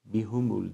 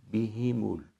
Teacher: Bihumul değil, bihimul. H'deki kesre harekesine dikkat etmemiz gerekiyor. Damme değil, kesre.